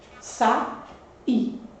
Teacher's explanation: esse A e esse I, que são duas vogais, aparecem em sílabas separadas. Então, esse I é um I que forma um hiato com a vogal anterior.